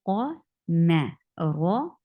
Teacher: Ra is heavy because ra is with fatha. Whenever ra is with fatha or dhamma, it is a heavy ra, and it should sound like ra.